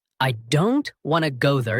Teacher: The important words in this sentence are stressed, are said strongly. Don't, go, now. The smaller words like I, to, and there are said more softly or quickly.